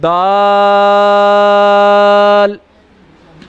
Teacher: دال جو ہے زبان کی نوک اور اوپر کے دانتوں کی جڑ سے ادا ہوتا ہے